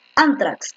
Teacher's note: La fuerza de voz está efectivamente en la penúltima, es una grave.